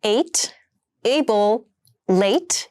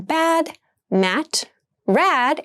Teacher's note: All three sounds are front vowels and so are pronounced in the front part of your mouth.